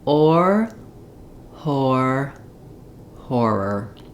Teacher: If the H sound gives you difficulty, what you want in this word is that the H is just some air blowing through your throat and your mouth is already in the position for saying the or sound